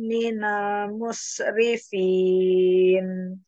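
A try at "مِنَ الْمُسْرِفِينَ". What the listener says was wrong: mungkin sebenarnya yang kurang kedengaran, minal, yang itu minalnya, minal musrif. Umi, kurang kedengaran sayatnya Umi.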